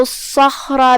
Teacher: کلمت الصخر میں یہاں حرف الصاد ہے اور اس پہ تشدید ہے. 2 حرف کے مقدار میں صاد کو پڑھنا ہے اور اسے بھاری آواز میں بھی، کیونکہ صاد حروف تفخیم میں سے ہے